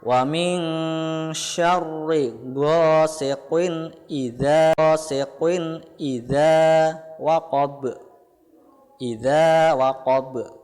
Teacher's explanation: Za itu pelafalannya terdapat pada ujung lidah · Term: huruf za